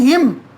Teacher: हिम में जब हम बोल रहे हैं हिम, अंत में अ का उच्चारण आ रहा है